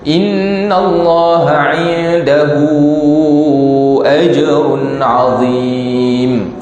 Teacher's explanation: Bila hu tu dia bertemu dengan hamzah, maka panjangnya jadi lebih daripada 2. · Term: mat silah tawilah